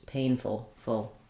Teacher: you may have a little bit of an uh sound but because the pain is long the full is going to be reduced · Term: very reduced vowel